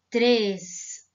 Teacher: se eu colocar o circunflexo, fica três. O som é fechado.